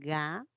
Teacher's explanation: de las tres solamente el sonido ga y el sonido K son oclusivas